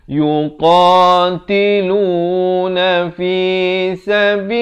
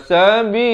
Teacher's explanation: Lafz jalalah di sini dibaca nipis. Jangan baca sabilillah, itu tebal, salah.